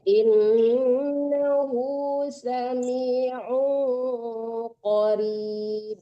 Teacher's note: Jangan un ya Bu, tapi disamarkan ke qof dan berdengung ya.